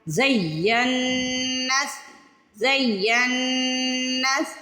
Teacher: زینس، ین پہ دیر لگانی ہے، پہلے زئی پھر ین، زینس زینس، نون پہ تھوڑی دیر لگا کے ناک میں آواز لے کے جانی ہے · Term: غنہ